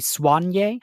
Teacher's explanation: Soigné can also be pronounced with the emphasis on the swan part. It can be Soigné, and that's how it's pronounced in French.